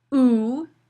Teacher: Oo, which is a high back tense vowel